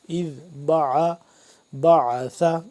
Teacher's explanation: سے پڑھیں گے، دال کو بھی سا کو بھی بیچ میں عین کو کھچاؤ پیدا کر کے حلق کے درمیانی حصے سے